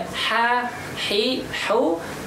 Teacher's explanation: Napasnya hembuskan dan suaranya lepas, tidak ada penekanan sama sekali. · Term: huruf ha